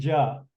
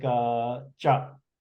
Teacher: The amount of pressure the tongue puts on the palate is lesser in case of ja, ja, nya compared to cha, cha. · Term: soft consonants